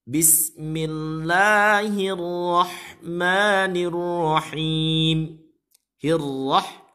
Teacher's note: Ra-nya tafkhim, tebal, hirrah, bukan hirrah.